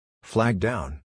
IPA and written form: flæɡ daʊn (flag down)